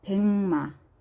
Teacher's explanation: 기역 뒤에 비음이 와서 이응으로 이렇게 바뀌었어요. 소리 나는 대로 이렇게 표기를 해줍니다. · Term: 비음화